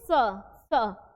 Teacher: हवा कहां से निकल रही है दात और मसूड़ा के के साथ मतलब बीच से वो हवा निकल रही है